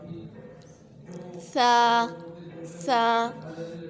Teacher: سا کو نرمی سے پڑھیں گے، نرمی سے ادا کریں گے۔ سا کی ادائیگی بہت نرمی سے ہوگی اور اس کو پڑھتے وقت ہماری زبان کی جو نوک ہے سامنے کے دانتوں سے لگے گی، دانتوں کے کناروں سے لگے گی